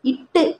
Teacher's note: நாவோட நுனி பார்த்தோம்னா அன்னத்தினோட நுனியை தொடுது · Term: நுனிப்பகுதி